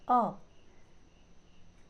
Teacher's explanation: मध्य स्वर वे स्वर जिनके उच्चारण में जीवा का मध्य भाग कुछ ऊपर उठा हो, मध्य स्वर कहलाते हैं, जैसे अ।